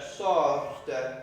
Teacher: So you let that T fall on the e coming after it.